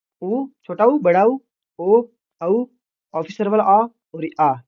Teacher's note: ये पश्च स्वर, मतलब जीभ के पीछे की तरफ से बोले जाते हैं।